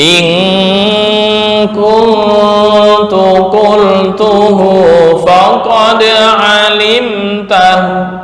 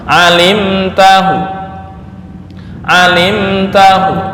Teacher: raum, artinya membaca dhammah di hu sepertiga harokat.